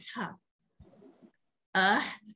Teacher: kita menekan suara kita ke tengah kerongkong, di mana dinding kerongkong yang merupakan tempat laluan suara akan disempitkan.